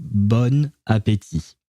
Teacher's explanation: uh you're supposed to pronounce the first word b but um since the first letter of the next word which is a vowel uh is an a uh you have to create some kind of a link between the two words when you're pronouncing them and it turns into Bon ATI